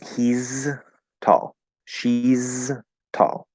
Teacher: we keep that z sound from is